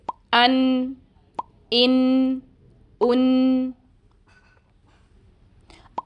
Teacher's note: नून जबान की नोक और इसके मुकाबिल सामने के ऊपर वाले दो दांतों के मसूड़ों से अदा होता है · نون زبان کی نوک اور اس کے مقابل سامنے کے اوپر والے 2 دانتوں کے مسوڑوں سے ادا ہوتا ہے